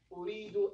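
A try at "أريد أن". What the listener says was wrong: An. An. Uridu An. You have to have the An there. Uridu An. Uridu An.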